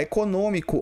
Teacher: Olha só, econômicos não é nem paroxítona e nem é hiato. Econômicos é uma proparoxítona, que é a antepenúltima sílaba forte.